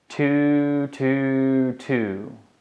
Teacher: at the very tip behind your top teeth think about it your tongue touches right behind your top teeth when you say two